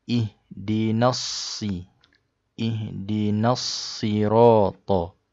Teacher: Kalau kita sambung daripada perkataan yang mula-mula ini, ihdina bertemu dengan as-sirata, dia akan mad asli di sini akan diabaikanlah sebab bertemu dengan alif lam syamsiyah. Jadi kita tak baca panjang di sini.